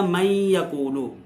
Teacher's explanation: جیسے من یقول، یہاں نون ساکن کے بعد حروف یرملون میں سے یا آ گیا ہے، تو یہ من یقول غنے کے ساتھ جو ہے ادغام ہوگا دونوں کو